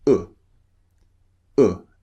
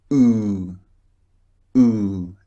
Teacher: The first one slightly rounded lips. The second one very rounded lips. And the first one is very short. The second one long.